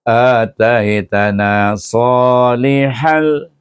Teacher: tanwin bertemu dengan huruf lam huruf lam adalah huruf idgham dan dibaca tanpa dengung